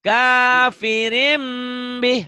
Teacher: kafirin bunyi N-nya jadi M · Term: iklab